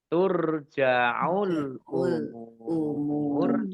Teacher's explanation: Mim domah wawu sukun mat tobi'i, tetapi karena bertemu dengan huruf terakhir yang dibaca sukun karena waqaf, maka menjadi mad arid lisukun